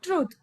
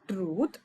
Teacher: truth uses a long, stretched vowel sound which represents with the length mark. So, it is not qualifying for the short vowel U sound.